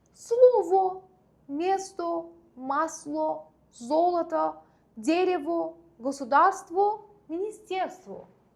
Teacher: Bunlar hamısı yazılışda O şəkilçisi ilə bitir, amma tələffüzdə A səsini verirlər. Niyə? Çünki ruslarda belə bir qayda var ki, O saiti vurğusu olduğu zaman, yəni fərqi yoxdur.